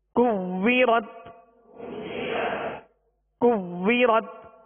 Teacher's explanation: واو میں ہونٹ گول کریں گے اور یہ واو مشدد ہے